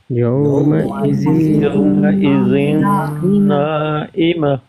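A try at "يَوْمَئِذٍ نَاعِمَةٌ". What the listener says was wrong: जब बात सुनिए, जब इदगाम नाकिस होता है ना तो 2 हरकतों के बराबर देर लगती है, थोड़ा रुकना है। देखें, यौमइज़िन नाइमह, नाइमह।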